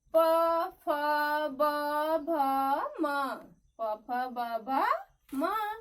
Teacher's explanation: इसका उच्चारण करते समय हमारे जो दोनों ओठ हैं वो एक दूसरे को स्पर्श कर रहे हैं। एक दूसरे को स्पर्श कर रहे हैं, इसलिए हम इसको ओष्ठ व्यंजन बोलते हैं।